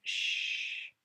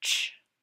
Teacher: we had a continuous sound, sh, with a stop sound, ch